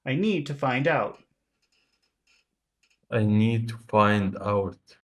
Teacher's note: Try to do that rhythm of small, big, small, big, small.